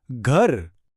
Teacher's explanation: जब हम घर बोलते हैं तो शुरू में बहुत भारी सी ग की आवाज़ आती है, बिल्कुल ऐसे जैसे मुंह से बहुत सारी हवा बाहर निकल रही हो। ग से घर।